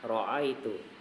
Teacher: sifat takrir, bergetarnya ujung lidah